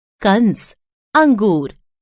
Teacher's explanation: यह अनुस्वार है इसके उच्चारण में नाक से ध्वनि निकलती है